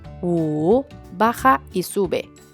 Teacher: W y la U suena igual como una U. Por eso con el tercer tono se pronuncia U, baja y sube